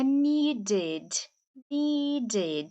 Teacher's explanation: não é e é e é um e fechadinho como se tivesse com acento ali com acento chapeuzinho do vovô